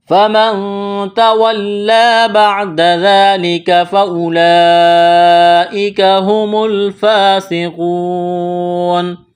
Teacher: جب اس آیت پر وقف کریں گے تو نون کو ساکن کریں گے